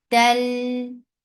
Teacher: this is idgham without gunna, so you're not keeping the sound in your nose at all.